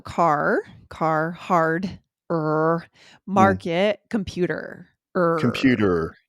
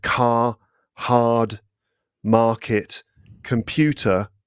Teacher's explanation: So with British English, that R, it doesn't really get rounded, Doesn't get rounded.